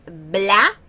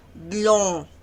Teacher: No es bla, sino blon, o. Y como es con un sonido de ON, entonces por eso es que se va más a la nariz, o. Porque de las 5 consonantes invertidas, an, en, in, on, un, háganlas y se van a dar cuenta que la de on es la que más se va para acá.